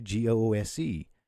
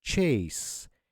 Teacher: So even though the S is surrounded by O and E, the S sound will still stay S, not a Z.